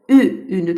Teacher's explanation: Ü, ünü də deyərkən dilimiz önə gəlir, incədir.